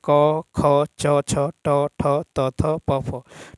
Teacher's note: वर्ग का पहला और दूसरा व्यंजन वर्ण अघोष ध्वनि है